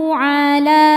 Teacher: Hukum tajwidnya adalah mad thobi'i muqaddar. Sebab huruf lam berharakat fathah panjang. Cara membacanya dipand dipanjangkan dua harakat.